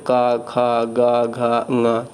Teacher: कंठ से बोले जाने वाले वर्ण